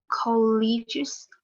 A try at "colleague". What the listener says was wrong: Đọc cẩn thận không nó thành cái trường cao đẳng đấy, colleague. Nếu không thành thì là trường cao đẳng đấy.